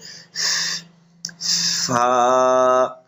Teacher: এই হরফটি উচ্চারণ করার সময় উপরের দুই দাঁত, নিচের ঠোঁটের পেট একবার উচ্চারণ, নিচের ঠোঁটের পেট, তারপরে আপনার লাগাইয়া নিচের ঠোঁটের পেটের সাথে লাগাইয়া উচ্চারণ করতে হবে, বাতাসও বের হবে।